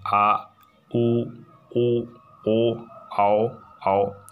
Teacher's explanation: भाग काम करता है, जैसे कि आ ऐसा बोलते हैं, तो ऐसा फील होती है कि सबसे पीछे वाला भाग से आवाज़ आ रही है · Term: पश्च स्वर